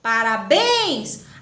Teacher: a última sílaba é tônica e não é isso portanto ela é oxítona